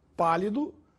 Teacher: a palavra pálido tem a sílaba mais forte na antepenúltima sílaba, pá. Portanto, é uma proparoxítona.